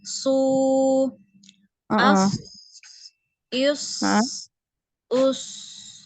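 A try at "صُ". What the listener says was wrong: ini sudah bagus sudah tebal cuman masih kurang terkumpul ya suaranya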